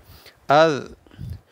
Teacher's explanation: اس زال کی سیٹی نہیں نکلنی چاہیے